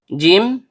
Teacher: tengah lidah naik memantul ke langit-langit.